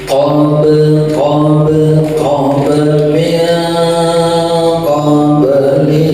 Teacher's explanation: pantul kan ada mati di tengah kalimat namanya qalqalah sugra